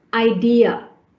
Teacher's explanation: So you can hear between the E and the A, a y sound, idea. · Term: vowel to vowel linking